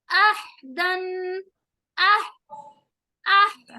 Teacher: देखें, अहदन, अह अह, मैंने हा पर आवाज को रोक लिया